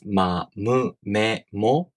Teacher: With nasal consonants, you let the air escape through your nose. When you pronounce ma, mu, me, mo, with your lips closed, your tongue just rests at the bottom of your mouth, being relaxed, while the air comes out of your nose. When you pronounce me, you close your lips and you make the tongue position of the E vowel, while the air comes out of your nose.